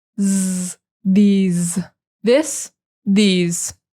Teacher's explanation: that S is that hard S, like a Z.